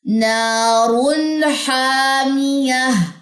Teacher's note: را پہ پیش آ جائے یا دو پیش آ جائے سمپل از دیٹ موٹی پڑی جائے گی